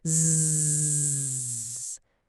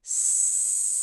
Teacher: It's because Z is a voiced sound and S is unvoiced. Your tongue and teeth are in the exact same position. The only thing that changes is whether your vocal cords are humming.